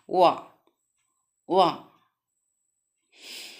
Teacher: ऐसे जिन व्यंजनों के उच्चारण में निचला, निकला नहीं, निचला ओष्ठ ऊपरी दांतों से स्पर्श करता है, जिन व्यंजनों के उच्चारण में निचला ओठ ऊपरी दांतों से स्पर्श करता है, दंतोष्ठ व्यंजन कहते हैं।